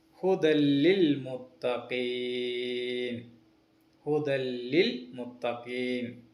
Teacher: ആ നൂനിനെ പൂർണ്ണമായും ഒഴിവാക്കി അടുത്ത അക്ഷരത്തോട് മണിപ്പിക്കാതെ ചേർത്തോതണം. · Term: ഇദ്ഹാം ബിലാ ഗുന്ന